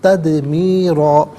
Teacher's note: تدمیرا میں اب دیکھیں دال ساکن ہے لیکن یہ بھی حرف قلقلہ ہے تو آواز لوٹتی بھی محسوس ہوگی۔ تدمیرا، را پر دو زبر کی تنوین سے پر کر کے پڑھا جائے گا